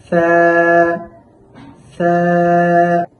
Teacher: সা হরফটি উচ্চারণের সময় জিহ্বার আগা সামনের উপরের দুই দাঁতের আগার সাথে লেগে খুব পাতলা করে উচ্চারণ করতে হবে